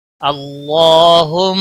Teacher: جلالہ اللہ کے لام کو موٹا پڑھیں گے زبر کی وجہ سے، کیونکہ پچھلے حرف کے اوپر زبر ہے، اس کے اوپر کھڑی زبر بھی ہے، ایک الف کے برابر کھینچ کر پڑھیں گے۔